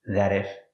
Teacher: The T in that is a fast D.